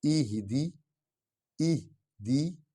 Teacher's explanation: یہ ہا جو ہے یہ سینے سے ادا ہوگی